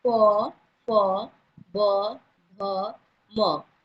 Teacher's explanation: फिर आते हैं हम प वर्ग पर, प, फ, ब, भ, म। ये प, फ, ब, भ, म बोलते वक्त हमारा ओठ क्या हो रहा है, ओठ टच हो रहा है, तो इसीलिए इसको क्या बोलेंगे, ओठों का स्पर्श यानी ओष्ठ व्यंजन बोलेंगे।